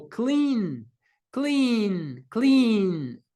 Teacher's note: as cordas vocais também vibram então temos esse n ao final do verbo é um Voice sound então acrescentarmos o Ed o Ed vai ter som de D